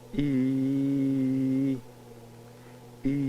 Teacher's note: during the vowel e the velopharyngeal port would generally be closed